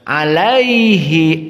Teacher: Alaihi ini menyebabkan tidak ada panjang karena sudah terputus dengan as-sukun. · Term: tidak ada mad